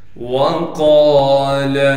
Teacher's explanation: وقال، واو کو بغیر کھینچے پڑھنا ہے، قاف کو موٹا کر کے پڑھیں گے اس لیے کہ قاف موٹے حروف میں سے ہے